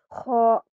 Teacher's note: اور خا یہ جو نقطے والی خا ہوتی ہے یہ حلق کے شروع کے یعنی کہ اخروی حصے سے ادا ہوتی ہے، اور اس کو ہم جب ادا کرتے ہیں تو ایسے جملے سے آتے جیسے کہ خا، ٹھیک ہے۔